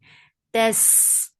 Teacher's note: Fatha on jaws attached with sin will get sifa of rakhawa. It is light and it has safir.